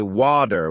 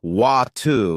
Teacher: In American English, people might say water with a D sound, while in British English, it's often wa- ter with a T sound. It's the same word, but it sounds different.